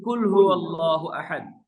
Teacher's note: কফ কাফ এ দুইটা জিবার গোড়া থেকে উচ্চারণ হয় গোড়া থেকে উচ্চারণ হওয়ার সময় মোটা হবে